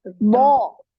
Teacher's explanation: Jadi semua permukaan lidah ini naik. Makanya dia tebal, ya tebal sekali.